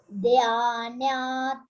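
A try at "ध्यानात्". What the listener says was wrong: Dha Mahaprana. You see, you have to stress. Dhyanat.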